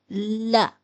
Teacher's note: لام زبان کی نوک کو پچھلے دانتوں سے لگا کر ادا کرتے ہیں، تالو کے ساتھ نہ لگے